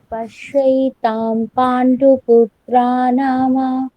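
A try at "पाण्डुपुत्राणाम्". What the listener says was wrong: না, ম নেই, ময়ে ময় হলন্ত আছে এখানে, তাহলে পুত্রাণাম, নাম নয়, রাম।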